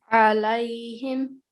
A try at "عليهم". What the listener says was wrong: Perfect. Now I could hear the sound.